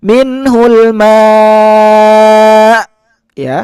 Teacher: huruf hamzahnya harus terdengar kuat